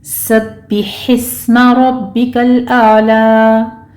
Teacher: बा के ऊपर तशदीद है, सख्ती से पढ़ेंगे, नीचे कसरा है, आवाज़ को शार्प रखेंगे। हिस्मा में हा बारीक है और सीन के ऊपर सिटी की आवाज़ आएगी, इस पर हमस होगा।